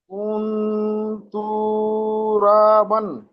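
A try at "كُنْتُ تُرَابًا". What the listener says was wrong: তু কান দিচ্ছেন কেন ভাই? কুনতু তুরাবান। ভাই এখানে দুটো তা রয়েছে, দেখেন ভালো করে খেয়াল করেন, আপনার মনটা কোন দিকে ভাই? এই দেখেন, এই তাপেস তু রয়েছে, আবার ফের তাপেস তু রয়েছে। তাহলে দুটো তা রয়েছে, তাহলে কুন তু একবার হবে, আবার তুরাবান একবার হবে।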